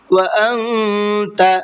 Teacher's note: نون ساکن کے بعد میں یہاں پر تا ہے تو نون کے اندر اخفا کر کے پڑھیں گے، اس لیے کہ تا اخفا کے حرفوں میں سے ہے۔